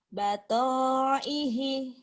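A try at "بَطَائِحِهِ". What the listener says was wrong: Pendek. Ini tangkai bukan. Pendek. Ujungnya doang yang panjang. Bato'ihi.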